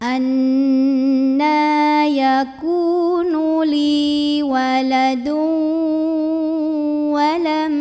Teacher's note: Idgham Bighunnah karena ada tanwin lemah yang bertemu dengan huruf wow maka tanwin lemahnya lebur ke huruf wawu